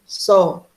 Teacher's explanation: a sílaba só, sai normalmente. Ela não precisa do nariz para ser pronunciada